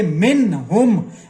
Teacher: تو یہاں پہ ہم اظہار کر کے نون کی آواز کو مکمل پڑھیں گے، من ہم، بغیر غنہ کے